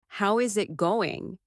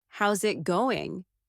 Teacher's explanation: how is it going becomes how's it going. The is disappears and the final G in going often softens. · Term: connected speech